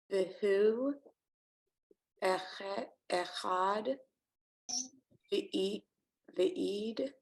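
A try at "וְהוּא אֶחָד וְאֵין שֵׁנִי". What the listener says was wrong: Ain. That's a nun. So Ain.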